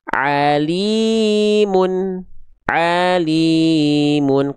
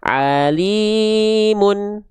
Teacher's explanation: Alimun tuh nada saya flat tapi dua harakatnya terjaga.